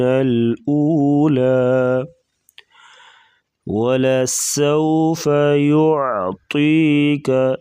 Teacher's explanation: سین سیٹی جیسی آواز نکالیں گے۔ واو ساکن اس سے پہلے زبر ہے تو واو لین ہوگی، یعنی حروف لین 2 ہیں، واو اور یا، ان کو نرمی کے ساتھ پڑھیں گے۔